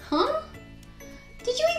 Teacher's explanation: if we wanted to convey confusion suspicion or maybe if you're guilty then we often use a rising intonation